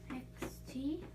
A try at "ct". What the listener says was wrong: That would be xt. Kt. Kt. That's not one of our blends, right? So what else could it be if it's not K? CT says kt.